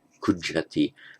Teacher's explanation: it's an aspirate consonant there, so you aspirate the j